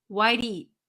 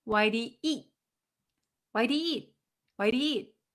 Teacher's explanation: You don't hear the eat. You don't hear the t sound.